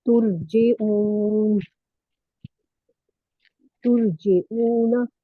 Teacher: آئین کو واؤ میں ملا کے باریک پڑھیں گے